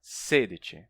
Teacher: Você só faz a pronúncia da primeira sílaba forte e as outras ficam penduradas.